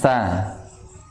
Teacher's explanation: Ujung lidah menyentuh gigi seri atas.